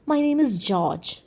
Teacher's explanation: it is not the word name that is stressed in the response but it is the word George that is stressed